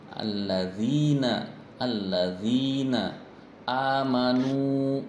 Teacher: dipanjangkan satu ketukannya dua harokat itu Mad Thobi'i · memperhatikan bacaan panjang Mad Thobi'i dua harokat